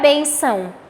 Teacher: A sílaba tônica é a penúltima, por isso paroxítona.